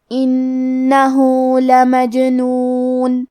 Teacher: کلمت انہو میں حرف نون پہ تشدید ہے تو ہم 2 حرف کے برابر نون کو پڑھیں گے. آخری میں ہا پہ الٹا پیش ہے، یہاں حکم ہے مد صلہ صغرا، ہمیں اپنی آواز 2 مد کے برابر لمبی کرنا ہے